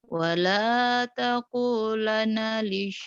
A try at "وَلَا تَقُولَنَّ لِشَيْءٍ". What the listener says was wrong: Wala taqulanna li nyamber. Nunnya ditahan gunnya.